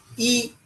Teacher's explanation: ई बोलने से हम जो हवा कंठ से ऊपर आती है वो तालु पर आघात करती है, ऐसा अनुभव होता है।